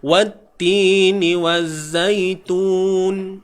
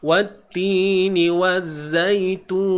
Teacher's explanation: So yang tun ni pula ma'arid li sukun. Sama ada kita nak pilih terpulang 2, 4 atau 6.